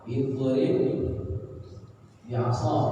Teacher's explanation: satu baris mati, satu berharokat, maka ba yang pertama nggak dibaca, ba yang kedua tasdid. Ini namanya idgham. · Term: idgham mutamatsilain